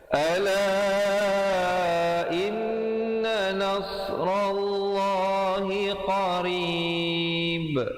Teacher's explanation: ba-nya diberikan pantulan qalqalah kubra di situ, walaupun asalnya hidup tetapi diberikan mati kerana waqaf